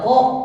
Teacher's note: Maka ketika membaca huruf Ko harus dipantulkan, harus ditekan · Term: qalqalah